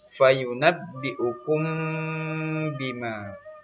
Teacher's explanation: mimati bertemu ba, ini hukumnya ikhfa syafawi, jadi dia berdengung Ananda. 2 harakat panjangnya.